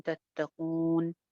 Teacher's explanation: मद्दे आरिज़ लग जाएगी, 2 से 3 अलिफ लंबा करेंगे